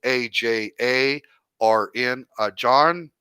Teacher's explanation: They actually kind of, there's an R in there, but you don't really say the R